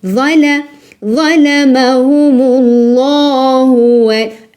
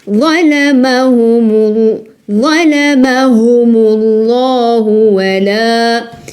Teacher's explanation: Allah ici emphatique parce qu'il est précédé par dhamma.